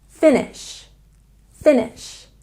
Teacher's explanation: And finish has stress on the first syllable.